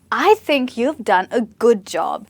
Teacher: Here, the stress is on the first word, and this is falling intonation. You go from high to low, and this is being confident.